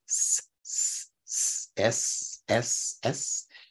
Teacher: the S sound is in the front as a sibilant, a friction in the front of the mouth